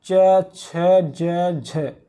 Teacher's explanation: जब जिह्वा आपकी तालु के ऊपर टच होती है तो इसी को कहते हैं तालव्य ध्वनियाँ।